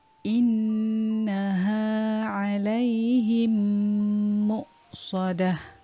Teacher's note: Idgham mithlain hurufnya mim sakinah bertemu dengan huruf mim dan cara bacaannya perlu didengungkan dengan kadar 2 harakat.